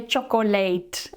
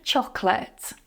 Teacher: Two syllables, okay, and the second one is weak. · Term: schwa